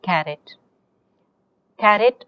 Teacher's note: where is the stress falling on the first syllable